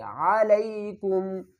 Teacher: عین کو حلق کے درمیان والے حصے سے ادا کریں گے